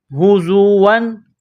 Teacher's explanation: زا میں سیٹی کی آواز پیدا کرنی ہے، دانتوں کو سختی کے ساتھ ملائیں گے